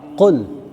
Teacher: Huruf lamnya, huruf lam itu mati di situ ya. Usahakan jangan ada pantulannya, jangan qul.